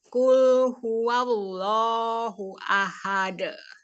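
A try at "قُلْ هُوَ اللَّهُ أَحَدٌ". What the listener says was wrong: Ya, sempurnakan lagi untuk huwallah itu agak dialirkan ya lamnya. Jadi jangan langsung huwallah. Huwallah. Qul huwallahu ahad. Ya, dialirkan lamnya ya. bukan huwallah. Huwallah. Ayo ditekan.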